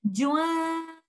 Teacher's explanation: We will merge the sakin letter hidden in Tanween in letter Lam